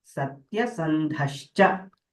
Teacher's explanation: So there satyasandhaha cha, the visarga gets shakara